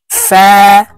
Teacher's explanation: উপরের দাঁত নিচের ঠোঁটের পেটের সঙ্গে লাগিয়ে ফা হরফ উচ্চারণ হবে